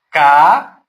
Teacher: Vocês percebem que aqui o A separou do outro A, duas vogais, sílabas diferentes. Se enquadra como hiato.